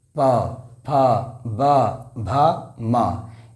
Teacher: इन सभी का उच्चारण जो हो रहा है हमारे ओष्ठ के द्वारा ही हो रहा है।